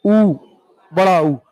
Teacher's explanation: ओठ गोल हो रहे हैं, ओठ की सहायता से बोल बदो। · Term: ओष्ठय